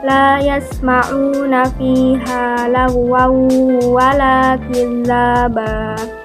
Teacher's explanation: lahuwal Akil laba Naya tersebut terdapat hukum bacaan Idgham Bighunnah yaitu tanwin bertemu dengan huruf Waw jadi membacanya harus dengung dan ditahan selama dua harokat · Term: idgham biguna